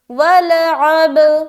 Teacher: عین بھی نکالنا اور با میں قلقلہ بھی کرنا ملاتے ہوئے